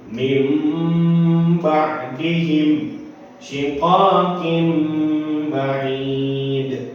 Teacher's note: maka suara nun sukun atau tanwin ditukar dengan suara mim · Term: iqlab